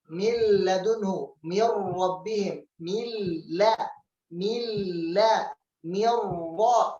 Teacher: Kedua huruf ini lam dan ra dibaca dengan idgham, dimasukkan dengan tanpa gunnah atau dengung. · بقي من حروف يرملون اللام والراء، فحكمها إدغام كامل بغير غنة، يعني حرف النون لا يوجد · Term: idgham bi ghairi gunnah